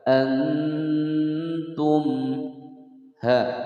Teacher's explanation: mim sukun bertemu ha, dibaca jelas, tidak boleh dipantulkan